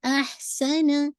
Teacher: ہمس کو بھی واضح کیجیے گا، ایئر آپ کی باہر آئے گی